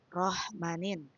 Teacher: Pada kata ini nun sukun diikuti oleh huruf nun dan dibaca dengan suara nasal gunnah. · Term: suara hidung